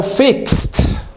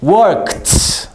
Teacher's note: Som de T, não pronuncia a sílaba extra.